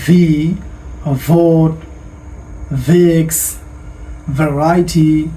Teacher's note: ভি, ভি, ভি উচ্চারণটা খুব ভালো করে ফলো করুন। উপরের দাঁত নিচের ঠোঁটের সাথে লাগবে